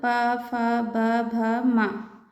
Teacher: ये ओष्ठ से बोले जाते हैं, इसलिए इन्हें ओष्ठीय व्यंजन कहा जाता है।